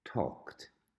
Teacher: The pronunciation of talk in the past is talked. So it's as if it was a T at the end. Talked, although the spelling is ED. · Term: T sound